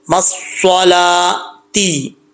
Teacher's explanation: ٹھیک ہے، یہ کھڑا زبر واؤ کا نہیں ہے، یہ سٹینڈ زبر جو ہے یہ لام کا سٹینڈ زبر ہے. لام کو لمبا کریں گے، واؤ پڑھا نہیں جائے گا